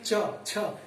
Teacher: जिह्वा के अग्रभाग द्वारा कठोर तालु का स्पर्श करना, उसको हम कहते हैं तालव्य ध्वनियां।